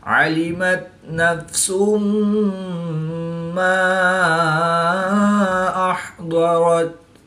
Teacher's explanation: دو پیش کی تنوین کے بعد میم حروف یرملون میں سے ہے، تو یہاں پر ادغام مع الغنہ ہوگا، یعنی غنہ کر کے پڑھیں گے۔